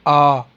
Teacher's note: तो आप उच्चारण करके देख लीजिए। आ तो कंठ से हो रहा है भाई, तालु से तो नहीं हो रहा, जिह्वा तालु के पास नहीं जा रही है।